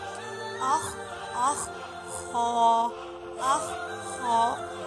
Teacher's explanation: खौ हलक के शुरू वाले हिस्से से अदा होता है, मुंह की तरफ जो सा होता है।